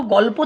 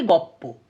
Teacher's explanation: ধরো গল্প থেকে গপ্প, অর্থাৎ সেখানে ল আর প ছিল, দিয়ে দুটো প হয়ে গেছে, মানে লটা লোপ পেয়ে লটা পয়ে পরিণত হয়ে গেছে, সেটাকে সমীভবন বলছে, মানে এক সমান হয়ে যাচ্ছে।